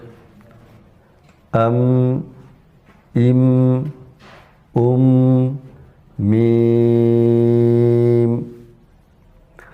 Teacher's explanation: میم ہونٹوں کے بیرونی حصے سے ادا ہوتا ہے، یعنی ہونٹوں کے خشکی والے حصے کے ملنے سے میم ادا ہوتا ہے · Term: حرف میم